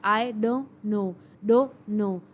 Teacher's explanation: اب آئی ڈونٹ نو کے اندر بھی ٹی ختم ہو رہا ہے